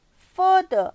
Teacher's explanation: you are not supposed to pronounce that R. You are just going to elongate the sound of the vowel in front of the R.